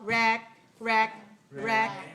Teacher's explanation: it's stressed right because it's longer and clearer and higher it's a stress syllable so it has to be higher how